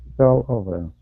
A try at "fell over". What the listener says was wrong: Good. That's really good.